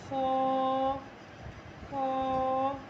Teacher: یہ جو خو ہے یہ بھی ایک الف کے مطابق کھینچنا ہے، اور خو جو ہے وہ حلق کے اوپر والے حصے سے ادا ہوتا ہے